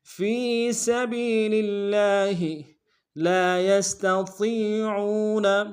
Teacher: مقدار میں کھینچیں گے، یا کو سین کے ساتھ ملانا ہے، سین کی سیٹی باریک ہوگی